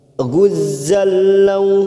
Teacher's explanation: Guzzal, masuk kata huruf lam yang bertasdid. Fathah tanwin pada huruf zain bertemu lam namanya bacaan idgham bila gunnah, hanya masuk tanpa ditekan lama-lama.